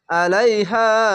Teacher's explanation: মাদ্দা আরজি তিন আলিফ টেনে পড়বেন আইন জবর আ লাম ইয়া জবর লাই আলাই হা আলিফ জবর